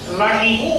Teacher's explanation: বা তানভীন বিশিষ্ট সেটি ওয়াও এর সাথে মিলায় করতে হচ্ছে তাই তানবিন উচ্চারিত হচ্ছে না এখানে শুধু একটি পেশ উচ্চারিত হচ্ছে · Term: ঈদগামে বাগুনার